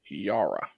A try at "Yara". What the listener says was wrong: Is that an I? Surely that would be Yaira. I think it's like Yara.